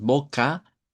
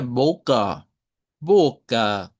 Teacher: Otra vez con la a media que se usaría al final